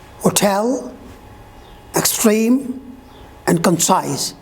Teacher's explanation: In these words, you will see that the second syllable is stressed.